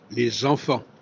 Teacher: On ne dit pas les enfants, on dit les enfants. Donc, le S devient un Z au niveau de la prononciation. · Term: liaison